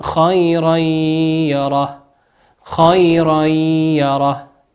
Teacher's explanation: وقوله عز وجل خيرا يره تنوين أتى بعده حرف الياء والياء من حروف الإدغام بغنة يغن مقدار حركتين